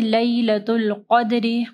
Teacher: قاف کو ہیوی پڑھنا ہے، دال پہ کلکلہ کرنا ہے